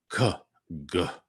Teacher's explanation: I can really feel them in the back of my throat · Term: gutturals